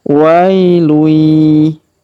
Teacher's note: Kemudian wailui, perhatikan huruf wa kita panjangkan 2 harokat karena ia sukun di depannya